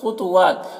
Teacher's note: خا اور طا دونوں حروف مستعلیہ میں سے ہے، دونوں کو پر کر کے پڑھیں گے. واو میں کھڑا زبر ہے، ایک الف کے برابر کھینچیں گے.